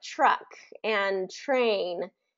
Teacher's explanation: when TR kind of like Truck and Train there is more of a chchch that CH sound